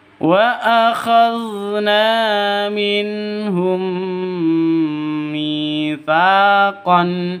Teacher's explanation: Idgham mimi. Bacanya dengung 2 ketukan. Pokoknya idgham mimi itu dengung.